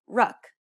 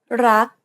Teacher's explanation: do you notice how air in the final k sound is not expelled this is true for all final consonants and Thai words if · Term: unreleased